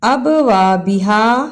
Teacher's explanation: ابوابہا با پہ قلقلہ بھی کرنا ہے، واو کے ساتھ الف مدہ ہے، اسے بھی ادا کرنا ہے، اور ہا کی الف مدہ کو بھی صحیح ادا کرنا ہے، اسے اب وبہا نہیں پڑھنا۔